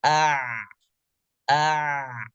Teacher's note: kalau dalam keadaan sukun maka pita suaranya tertutup bukan rapat tapi hanya sempit saja kalau dibaca a a jadi tidak ditutup total seperti Hamzah ditutup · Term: huruf ain